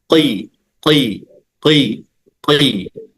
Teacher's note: tetap tebal kenapa karena pangkal lidah tetap terangkat cuman dia rahangnya turun